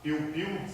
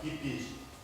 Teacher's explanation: A substituição da vogal mais glide ou semivogal por vogal.